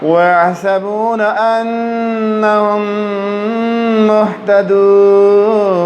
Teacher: میم پہ غنہ کریں نون پہ غنہ کریں دونوں مشدد ہیں